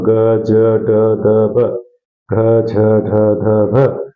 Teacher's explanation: इनको बोलते समय घोष उत्पन्न होता है नाद उत्पन्न होता है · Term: घोष वर्ण